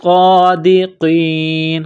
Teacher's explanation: صاد کو موٹا کرنا ہے، سٹی کی آواز پیدا کرنی ہے، صاد کے اوپر کڑا زبر ہے، ایک الف کے لمٹ میں کھینچنا ہے